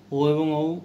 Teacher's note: ও এবং ঔ কণ্ঠ এবং ওষ্ঠে এসে একসাথে চাপ পড়ে, তাই কণ্ঠস্থ বর্ণ।